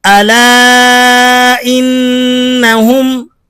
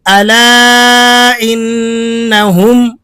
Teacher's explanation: مد منفصل جائز ہے، حروف مدہ الگ کلمے میں اور حمزہ دوسرے کلمے میں، 4 حرکتوں کے قائم مقام اسے کھینچا جائے گا۔